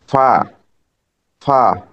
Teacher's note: নিচের ঠোঁটের সামনের উপরে দুই দাঁতের আগার সঙ্গে লাগিয়ে